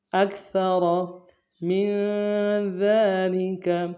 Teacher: میم کو نون ساکن کے ساتھ ملانا ہے، نون ساکن میں غنہ کریں گے